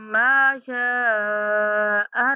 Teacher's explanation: أي سختی کے ساتھ، أي صورة ما، غنہ کریں گے ماں کے اوپر۔ شاء 5 سیکنڈ تک لمبی کریں گے